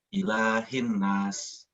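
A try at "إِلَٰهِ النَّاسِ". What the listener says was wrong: Ditahan lagi. Ditahan lebih lama lagi.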